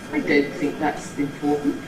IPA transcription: I ˌdon’t think that’s im͵portant